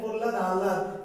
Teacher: প্রহ্লাদ হয়ের উচ্চারণটা বেশি হচ্ছে, লটা হালকা সফট হয়ে যাচ্ছে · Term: ফলা